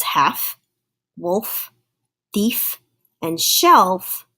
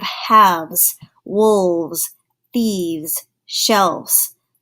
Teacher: the shape of your mouth actually changes so that F sound starts to sound like the letter V so it actually changes it to a ves so you have